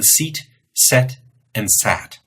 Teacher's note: You'll notice that your tongue starts out high, E, goes to the middle of your mouth, and then goes down to a